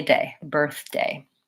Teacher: It has first syllable stress, so birth is long and day is short. Also make sure that on the second vowel that you don't just say one sound, birthday, but that you lengthen and make sure you close to birthday, A.